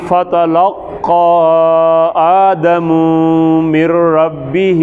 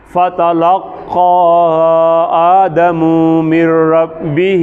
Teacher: قاف موٹا ہے، کاف کے اوپر کھڑی زبر ہے اور اوپر ایک مد بھی ہے، بڑا کریں، کھینچیں